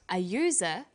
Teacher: user sounds like it begins with a Y.